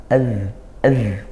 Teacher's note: Zal itu makhrajnya di ujung lidah bertemu ujung gigi dari atas. Bertemu ujung gigi seri atas.